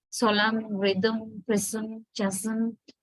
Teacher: The nasal consonant is m. There are also no vowel sound is involved. Only the consonant is there. So it itself occurs inside the syllable. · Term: syllabic function